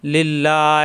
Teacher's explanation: এখানে কিন্তু আল্লাহ শব্দ আসছে, ডানে জের আসার কারণে লা হবে, ল হবে না।